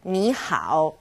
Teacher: two third tones turn into second and third